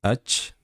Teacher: ach deb yuborsak, chelashib, jarangsizlashib ketadi.